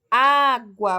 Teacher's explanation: O acento agudo indica que aquele som é mais aberto. Água, o som do A é mais aberto.